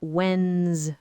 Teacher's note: And key number 3, the S sound is voiced. It sounds like a Z because it follows the voiced N sound.